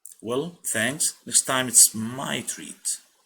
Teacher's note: هنا my حنشددها في الحكي أكثر لأنه هي أهم شيء في الجملة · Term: stressed